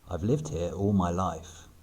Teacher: Notice the intrusive R between here and all.